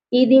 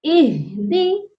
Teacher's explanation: اس آیت کی جو مین غلطی ہے وہ ہے اہدنا الصراط المستقیم، ایدی نہیں ہوگا، اہدی، ہاں کی آواز سینے سے آئے گی۔